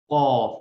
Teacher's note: زبان کے پچھلے حصہ کو اوپر کے تالو سے لگانے پر حلق کی طرف موٹی آواز میں قاف ادا ہوتا ہے. زبان کا سب سے جو پچھلا حصہ ہے اس کو اوپر کی طرف آپ چپکائیں گے، قاف.